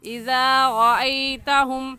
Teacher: اپنی زبان کی نوک دونوں دانتوں کے درمیان میں لے کر آئیں گے تو ذال ادا ہوگا